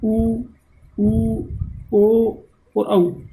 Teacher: इनके उच्चारण करते समय ओठों की आकृति गोल हो जाती है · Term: वृत्ताकार